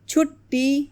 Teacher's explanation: टे की आवाज़ 2 बार आ रही है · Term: तजदीद